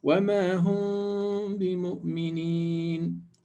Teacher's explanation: in my pronunciation of the meme, I'm going to do ikhfa or hiding, and I'm going to do 2 units of length. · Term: Ikhfa Shafawi